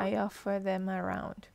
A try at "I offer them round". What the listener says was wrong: Not around, round.